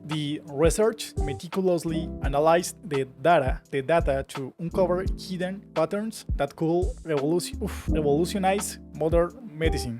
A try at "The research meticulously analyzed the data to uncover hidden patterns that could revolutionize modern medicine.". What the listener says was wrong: So very good, very good.